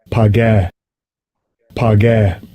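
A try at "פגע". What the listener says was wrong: Yeah, so that's probably a bad way to pronounce it. There is no ah in Hebrew, but okay.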